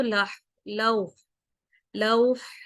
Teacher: ہوں، ٹھیک ہے، تو اگر وقف کریں گے تو لوح، لوح، ہا کی آواز آئے گی اور ساکن کر دیں گے اس کو